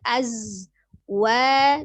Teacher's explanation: Hati-hati huruf zai sukunnya sifatnya safir. Azwa, 2 harokat, ada alif sebelumnya fathah di huruf waw.